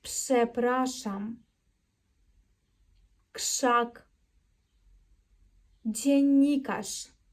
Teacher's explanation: ми тут не вимовляємо рз як ж а вимовляємо як глухеньку ш ми це робимо тому що на стоїть або після глухої приголосної